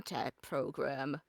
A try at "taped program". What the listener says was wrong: A taped program. you said tapped program.